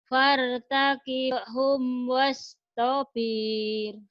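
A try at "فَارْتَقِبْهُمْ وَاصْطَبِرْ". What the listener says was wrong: Pendek. Wartakibhum wastabir. Pendek, gak ada yang panjang, gak ada yang panjang.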